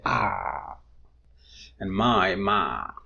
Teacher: in some varieties of English when people speak instead of I they say a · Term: monation